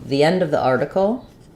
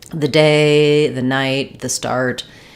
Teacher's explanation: it has the tense e sound because for both article and end those words begin with a vowel sound